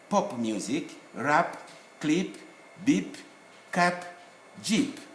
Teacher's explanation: words borrowed from other languages like English have got audible final P.